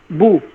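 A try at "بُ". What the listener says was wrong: বু বু বু বললে তো বু হয়, বু ঠোঁট মানে চ্যাপ্টা করে, আপনার প্রত্যেকটা হরফ ওয়ায়ের প্রত্যেকটাই চ্যাপ্টা করে করছেন, ওয়া ওয়া উই উই উু, কিন্তু এটা ঠোঁট গোল করলে আপনি তিনটা হরফ উচ্চারণ চলে আসবে, ওয়া উই উু, ওয়া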